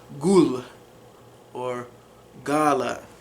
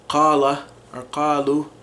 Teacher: So, some interesting things about the Iraqi dialect is the qaf that we talked about earlier becomes a G sound